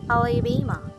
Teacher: word but the other three syllables do not receive equal stress we say that the first syllable has secondary stress while the second and fourth are completely unstressed · Let us consider the word Alabama. The third syllable bay is the most prominent and bears the main or primary stress of the word, but the other 3 syllables do not receive equal stress.